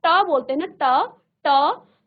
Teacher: के ऊपर जो छत बनी होती है वो हमारा तालू है तालू से थोड़ा सा आप आगे आएंगे वो आपका मूर्धा है